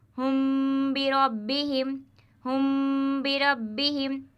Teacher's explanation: اسی طرح یہاں پر بھی میم ساکن ہے اور میم ساکن کے بعد با آیا ہوا ہے تو یہاں پر بھی اخفاء شفوی ہوگا اور ایک الف کے برابر کھینچ کر ناک سے گنہ ہو کر پڑھا جائے گا۔ اس طرح ہم بربہم، ہم بربہم، ہا میم پیش ہم، با زیر بی، ہم بی، را با زبر رب، ہم برب، با زیر بی، ہم بربی، ہا میم زیر ہم، ہم بربہم، ہم بربہم۔